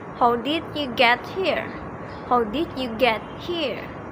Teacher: We also use falling intonation in WH questions.